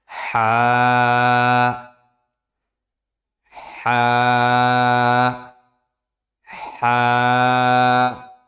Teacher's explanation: হা উচ্চারিত হয় কণ্ঠনালীর মধ্যখান থেকে